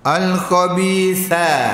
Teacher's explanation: makhraj sa ni hujung gigi gusi